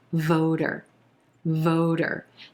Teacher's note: vote when we add the er this word becomes voter voter notice that t becomes a flap t which sounds like a soft d voter voter that second syllable is going to be very soft